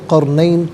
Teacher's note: را ساکن ما قبل قاف پر زبر، را ساکن کو پر کر کے پڑھا جائے گا۔ عن ذی القرنین یہاں وقف کریں گے تو قرنین پڑھیں گے۔